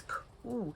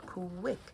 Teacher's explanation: when you say a word like quick, you hear two sounds, k w, and that the u in those letters is making that w sound, quick.